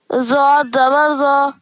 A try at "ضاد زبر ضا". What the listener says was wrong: ضاد کو اور موٹا. ضاد زبر ضا.